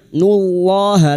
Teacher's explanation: lam jalalah yang didahului dhammah dibaca tafkhim